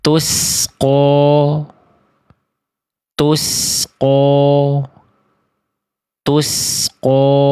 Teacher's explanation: dilafalkan dengan memonyongkan bibir ketika berharakat fathah